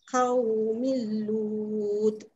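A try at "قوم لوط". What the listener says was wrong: Mi, mi, mi, mi. Ada mil-mil tak nak lah. Tak nak tarik lah. Milut.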